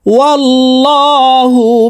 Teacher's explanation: এই লামকে ল অর্থাৎ মোটা ভাবে পড়তে হবে